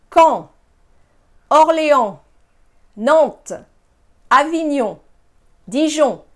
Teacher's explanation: you do not hear those consonants, those N's. It's one sound. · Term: nasal sounds